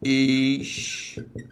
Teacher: Então, repare, se agora eu fiz esta divisão, acompanhe, a sílaba tônica deixou de ser a penúltima e passou a ser a antepenúltima